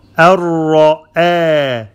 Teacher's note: Ra is heavy and then hamza is light.